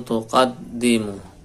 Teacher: nun sukun ketemu ta, ikhfa, samarnya didengungkan